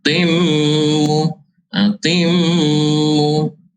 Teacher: mengidghamkan huruf tanwin itu ke dalam huruf mim. Idgham ma'al gunnah, baca dengung 2 harakat.